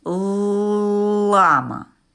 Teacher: звук л це твердий приголосний